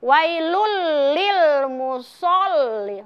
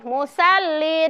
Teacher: terasa ya pangkal lidah itu ada di langit-langit. Dan suara yang dihasilkan itu lebih tebal, bukan tipis. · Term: huruf isti'la